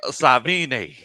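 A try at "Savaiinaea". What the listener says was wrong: I think you might be bleeding a syllable out or two. Savalanie?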